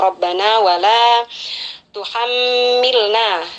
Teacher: Di sini ada mim bertasydid, kita penuhi gunnah musyaddadanya dengan mendengungkannya selama kurang lebih 3 harakat ya, dengungannya yang sempurna.